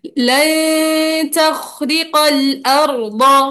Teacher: यहाँ अब पे यहाँ पे नून साकिन के बाद ता आ रहा है तो हम गुन्ना करेंगे।